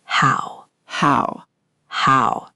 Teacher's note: the Mandarin ow is rounder than the English how. Round your lips a little more at the end.